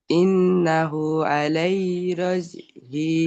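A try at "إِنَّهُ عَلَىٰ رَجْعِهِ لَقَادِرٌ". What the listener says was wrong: আলাই নয়, আলা রাজিহি, লাকাদির।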